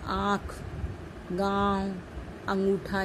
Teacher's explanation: इसमें मुंह नाक दोनों से हवा निकलती है, मुंह से ज्यादा। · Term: अनुनासिक